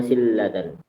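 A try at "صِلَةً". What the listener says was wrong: silatan, salah. Sila tidak pakai tasdid di lamnya. Sila.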